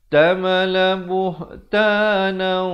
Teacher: tanwin bertemu waw, masuk beserta dengung dua harakat